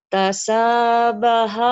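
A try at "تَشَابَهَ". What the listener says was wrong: Shinnya gede. Shinnya gede. Syah kalau ada orang Sunda. Syah. Tasya. Tasyabaha.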